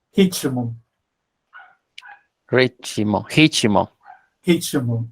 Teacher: la R se pronuncia como la J, ¿no? Y pronunciamos la T como T o chi.